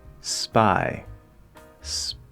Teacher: because the weak p already sounds similar to the week b when you add that s and it takes a little bit extra from the p it sounds even more like the weak b spy spy now in my particular opinion it's still a p